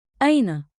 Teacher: Keep it rising at the end, curious, friendly.